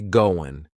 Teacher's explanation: That final G in the word going is going to be cut off, and we'll just say goin'.